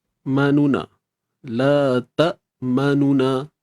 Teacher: Untuk nun baris depan ni, kita baca dia 1/3 harakat je. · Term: raum